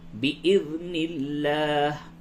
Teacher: لفظ اللہ کے لام کو باریک پڑھیں گے کیونکہ اس سے قبل زیر ہے